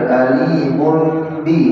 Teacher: Jadi membacanya ditahan dengan menyempurnakan menutup bibir kita. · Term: ikhfa asy-syafawi